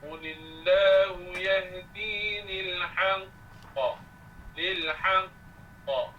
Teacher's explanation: Dia qalqalah akbar yang ada padanya sabdu, maka kita tekankan kerana sabdunya kemudian keluarkan bunyi qalqalah ni.